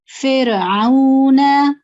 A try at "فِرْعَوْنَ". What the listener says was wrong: نا آپ کا تھوڑا سا لمبا ہو رہا ہے. جی فرعون، بس نا کو کھینچے نہیں زیادہ.